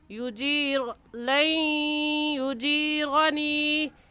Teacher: انی، لین پر ہم غنہ کریں گے کیونکہ نون ساکن کے بعد حروف یرملون جو کہ 6 ہیں، یا غا میم لام واو نون یرملون، ان میں سے یا آگے ہے تو غنہ کرنے کے ساتھ ساتھ ہم ادغام بھی کریں گے